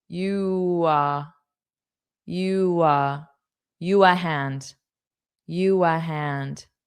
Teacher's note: to get from you to the a, you'll just have a little bit of a W sound